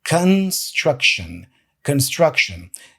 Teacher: So the con becomes a kun and the shon becomes a shun because the schwa sound is this So construction, that's the correct pronunciation of the word.